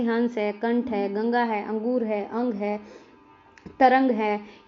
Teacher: इसका उच्चारण स्वर के बाद होता है, और ध्वनि जो है वो नाक से उत्पन्न होती है, इसीलिए इनको अनुस्वार बोला जाता है।